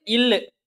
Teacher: இது மேல்வாயை நாக்கின் ஓரங்கள் தடித்து தடவுவதால் பிறக்கின்றன